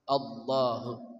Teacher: Lamnya dibaca tebal. Taghliz sangat tebal.